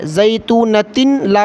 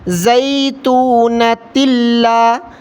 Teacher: زیتونۃ لا، تا لام دو زیر تل لام الف زبر لا، لام پر تشدید ہے اس لیے تا کو لام کے ساتھ ملا کر پڑھنا ہے